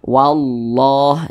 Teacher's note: Sebelumnya nih ada huruf yang memiliki tanda baca fathah, maka lafaz Allah dibaca tebal